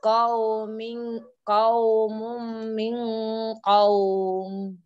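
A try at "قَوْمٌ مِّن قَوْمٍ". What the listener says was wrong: Qaumum min qaum. Dengungnya kurang lama sedikit Ibu.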